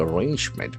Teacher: the accent falls on the second syllable